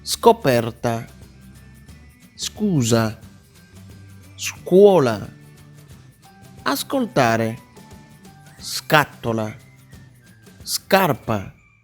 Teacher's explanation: Es el sonido de la S sorda, acompañada de un sonido fuerte de la C.